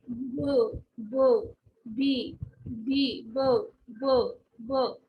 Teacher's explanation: So the b sound which is coming, b, b, is coming from the your voice box. There is a vibration in the voice box. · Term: voiced